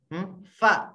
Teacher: Fa itu kan apa namanya? Bibir bagian belakang, bagian dalam dipertemukan dengan gigi atas